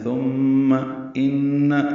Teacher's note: ثم ان میں نون مشدد پہ غنہ ہے